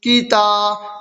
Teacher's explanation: تا الف زبر تا، کی تا، الف سے پہلے تا پر زبر کی حرکت ہے، اس لیے الف مدہ ہوا، الف مدہ کو ایک الف کے برابر کھینچ کر پڑھیں